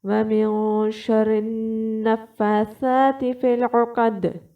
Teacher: آپ نے جو حلق کا دوسرا حصہ ہے وہاں سے آپ نے عین نکالنا ہوگا